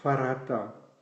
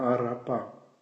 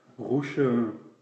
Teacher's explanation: Le R peut être dental, comme dans farata, peut être palatal, comme dans arapa, ou bien peut être guttural, comme dans roucheun